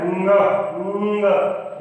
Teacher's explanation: अगर इसको आप सही उच्चारण बोलना चाहते हैं तो ग है, ग। ग में न को मिक्स कीजिए और न की ध्वनि निकालिए तो आएगा ङ